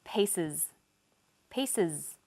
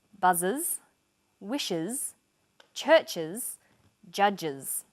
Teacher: the S on the end is pronounced Z because it followed an S sound